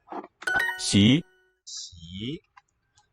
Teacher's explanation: The E vowel that follows shapes the fricative sh with the very small space up front here. Xi is what the X signifies.